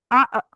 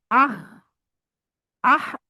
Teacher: ये दोनों हरूफ हलक के नीचे वाले हिस्से से अदा होते हैं, जो हमारी गर्दन की सीने की तरफ है। गर्दन का जो एंड है हमारे हल्क का, वहां से अदा होते हैं। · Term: इंतहाई हल्क वाला